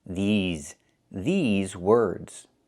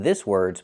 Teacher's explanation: We have to use the long e like green beans. I cannot use the short i like this is.